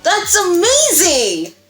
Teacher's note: your pitch is higher, you have a faster tempo, and you have increased volume. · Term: excitement